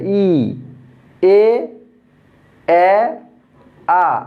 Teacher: আস্তে আস্তে কিন্তু ঠোঁট গোলাকৃতি হচ্ছে এবং চেপে যাচ্ছে, গোলাকৃত হচ্ছে এবং চেপে যাচ্ছে।